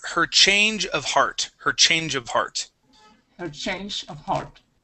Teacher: keep paying attention to your CH sounds remember it's that strong puff of air